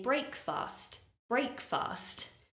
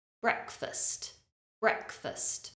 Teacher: an e bre and then the second part of the word because that syllable is not stressed it has a weak uh sound